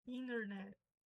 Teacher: No inglês americano, o N e o T fica mudo.